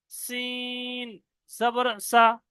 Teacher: সিন তিন আলিফ টান দিয়ে পড়েছি, জবরে টান দিই নাই